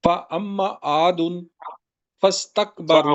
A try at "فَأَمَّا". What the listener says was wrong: فَأَمَّا لمبا کریں ذرا.